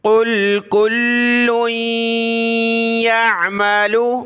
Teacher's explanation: قاف ہے موٹا اس کو لام کے ساتھ ملایا